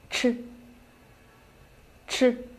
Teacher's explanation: Its position of articulation is the same as that of zh, but it is aspirated